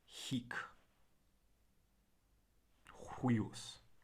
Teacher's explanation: H is pronounced in Latin, this breathy h